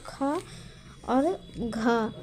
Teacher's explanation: बोलते समय जोर लगता है। मुंह से हवा तेज निकलती है। आवाज स्पष्ट और भारी होती है। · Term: महाप्राण व्यंजन